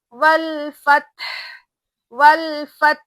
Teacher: हा साकिन है तो हा की आवाज भी एकदम क्लियरली वहां पे आनी चाहिए, हा की आवाज भी एकदम क्लियर होगी।